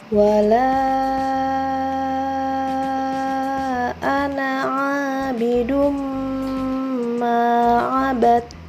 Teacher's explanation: Cara membacanya adalah dengan meleburkan suara tanwin ke dalam huruf mim dengan suara mendengung. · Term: idgham bi gunnah